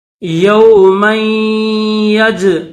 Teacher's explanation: میم جو ہے اس کو یا کے ساتھ ملائیں گے